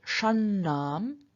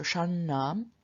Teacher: both of the nasals here both of the ends are retroflex